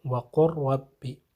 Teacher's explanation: لام کی آواز نہیں آئے گی بلکہ رب کا جو را ہے اس کی آواز آنی چاہیے، وَقُلْ رَبِّ۔ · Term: ادغام